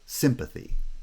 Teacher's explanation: forms a bi-syllabic foot and then the final extra syllable is unstressed